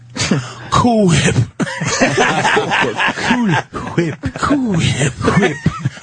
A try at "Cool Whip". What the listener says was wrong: Why are you pronouncing the H like that?